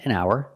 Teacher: remember the H is silent